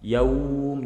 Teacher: ketika kita memanjangkan madlin ketika huruf wawu, maka dialeknya kita ke domah. Yaum dengan ke o.